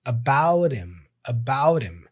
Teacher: drops the H for him · he connects the T for about with him. And he makes the flap sound.